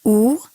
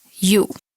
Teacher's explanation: The pair that we're talking about here in Lesson 22 is a great example because so far we have learned U and U. And you can hear the difference that the second version of that sound has that Y sound at the beginning of it. But both of them have, when you get to the pure vowel sound of it, both of them have the U sound. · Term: vowel pair